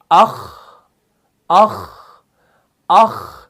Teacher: اس کے اندر بھی پستی ہے اور ایئر فلو بھی پاس ہو رہا ہے تو یہ صفت حمز ہے